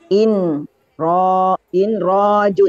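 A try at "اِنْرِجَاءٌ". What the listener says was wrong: Inri. Baris bawah.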